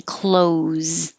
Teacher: these sound exactly the same whether it's close the door or clothes you wear just o's no th